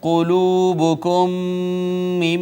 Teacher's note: میم ساکن کے بعد دوسری میم آ گئی، ادغام شفوی